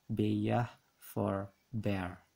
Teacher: vowelization is the substitution of a vowel sound for a liquid